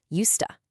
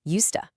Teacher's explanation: Saying both of them takes way too much effort. So, native speakers just drop the hard D and blend it right into the T · the hard D sound at the end of used and the hard T at the beginning of to are made in the exact same part of your mouth. Saying both of them takes way too much effort.